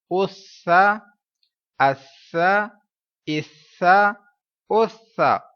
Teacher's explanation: سا حرف صفیریہ نہیں ہے، سیٹی والا حرف نہیں ہے، لہٰذا اس کو پڑھتے ہوئے سیٹی کی آواز نہیں آئے گی